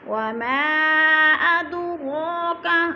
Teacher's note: اد پہ قلقلہ ہو رہا ہے، ہلا کر پڑھیں گے